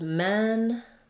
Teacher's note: Versus men, that vowel doesn't change. It's open, but it's lax. So the A and are about the same amount of openness.